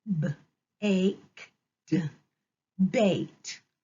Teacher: So we don't hear the E, but we hear the long A, and we hear the D sound at the end, D. So let's blend baked together.